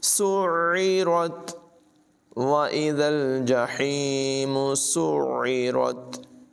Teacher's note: और आइन की आवाज़ हलक से निकलती है